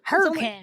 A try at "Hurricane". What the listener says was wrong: It only has 2 syllables. Hurricane.